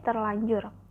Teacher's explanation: Dan contoh lain, dalam proses penimbuhan prefiks ter, pada kata dasar anjur, terjadi perubahan fonem di mana fonem R berubah menjadi fonem L, yaitu ter ditambah anjur menjadi terlanjur